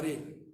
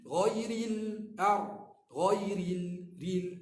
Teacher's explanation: Lidah ni lagi tonjah pergi depan, lagi nipis.